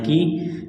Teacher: یا ساکن سے پہلے زیر ہے، حروف مدہ یا ہے، ایک الف کے برابر اس کو کھینچنا ہے۔ جب یہاں پر وقف کریں گے تو میم کو ساکن کریں گے۔